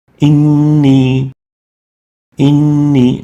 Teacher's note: noon with shadda and kasra is given Ghunnah for 2 units